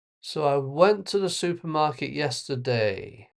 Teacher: It's a statement goes down at the end.